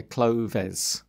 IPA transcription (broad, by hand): klʊðɛs